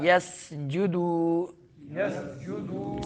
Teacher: سین میں باریک سیٹی نکالنی ہے